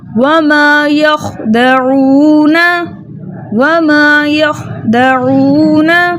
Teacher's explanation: वाव साकिनों से पहले किसी भी हर्फ के ऊपर पेश हो, ऐसा वाव मद्दा कहलाता है। वाव मद्दा को 2 हरकत की मिकदार खींच कर पढ़ते हैं। आइन को इसके प्रॉपर मखरज यानी वुस्ता हलक से अदा करेंगे, ठीक है, दरमियानी हलक से अदा करेंगे, ठीक है।